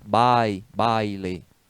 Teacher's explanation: eu pronuncio duas sílabas, e pronuncio aquele A e aquele I junto. Então, ali é o ditongo, né?